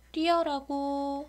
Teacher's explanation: 어였는데 여라고 해서 반모음 이가 첨가된 경우고요